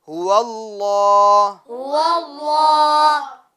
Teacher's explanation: لفظ اللہ کے لام کو ہم پور کریں گے